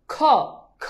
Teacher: খ বললে কাগজটা নড়ে যাচ্ছে, মানে আমার মুখ দিয়ে বাতাসের প্রবণতা বেশি। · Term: মহাপ্রাণ